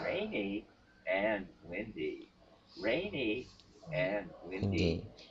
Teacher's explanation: The definite step down. Definite step down in pitch.